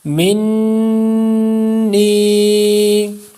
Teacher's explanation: نون مشدد کا غنہ اور یا مدہ